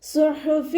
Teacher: ഹ തൊണ്ടയുടെ മധ്യഭാഗത്തിൽ നിന്നാണ് വരുന്നത് സൗണ്ടിനെ വ്യക്തമാക്കി കൊടുക്കുക ഇബ്റാഹീമ ഇബ് ബ കൽക്കലയുടെ ലെറ്റർ ആയതുകൊണ്ട് ഫുൾ സുക്കൂനും